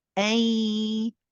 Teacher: this means that the the nasalization of the noon remains so half of the noon the physical part is gone however the sound part of the noon remains and we are still getting the nasalization so we say a and then we add the nasalization on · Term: incomplete merge